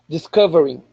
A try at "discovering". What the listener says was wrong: Yeah, not disco, but discovering.